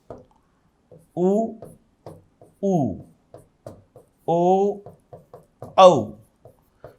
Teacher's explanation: ये जब आप बोलोगे ना तो होठ आपको गोल दिखाई देंगे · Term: वृत्ताकार